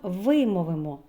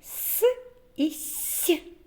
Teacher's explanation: вимовимо с і с як ми їх вимовляємо ротик напівприкритий утворюється щілина по якій проходить струмінь повітря при вимові виникає шум який нагадує свист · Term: звук с